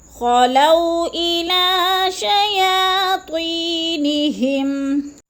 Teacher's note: خلو کو لمبا نہیں کرنا ہے کیونکہ وہ لین ہے، ادھر جلدی جلدی ادا کرنا ہے